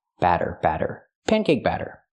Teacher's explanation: the double T makes a fast D sound